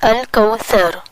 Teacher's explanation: زبان اٹھے گی، اوپر والے 2 دانتوں کے کناروں کو ٹچ کرے گی اس طرح کہ زبان کی نوک باہر نظر آتی رہے گی